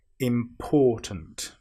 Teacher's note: some people will put the stress on the im, which is wrong. We need to put the stress on the or.